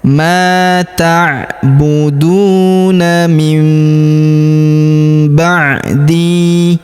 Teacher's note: huruf di kita panjangkan 2 harokat karena ya sukun di depannya